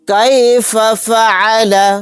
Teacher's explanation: یہاں پر عین کو اچھے سے حلق سے نکال کر ادا کریں گے۔